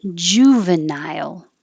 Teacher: I put nile as two syllables to remind you to go high enough for the I.